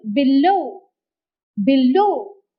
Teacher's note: the second syllable takes the stress